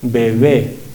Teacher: En la segunda, al estar entre 2 vocales, bebé, B. La segunda B tiene una abertura entre los labios que deja que el aire pase